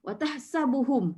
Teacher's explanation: Mim itu makhraj dia dari mana dia keluar adalah dari dua bibir. So syafawi bermaksud bibir. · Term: izharus syafawi